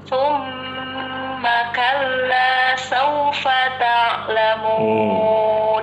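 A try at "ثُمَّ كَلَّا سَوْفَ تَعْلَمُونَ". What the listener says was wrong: Maaf Ibu, yang ta'lamun ini ainnya kurang. Thumma kalla sawfa ta'lamun. Ta'lamun.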